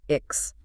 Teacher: It looks like an E and an X, but it really sounds like an E sound followed by a K and an S pushed forcefully together. · The back of your tongue hits the roof of your mouth for the K